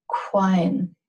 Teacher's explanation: This is an ejective Q with the raised W.